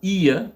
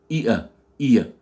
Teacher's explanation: Vous avez un I avec un schwa. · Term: la diphtongue IA